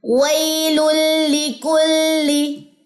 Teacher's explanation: لام کی زیر کو لمبا نہیں کرنا